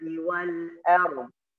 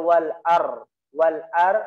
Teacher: Da makhrajnya di sini di tepi lidah. Ya, tepi tengah lidah disentuhkan ke gigi geraham kiri atau kanan, boleh.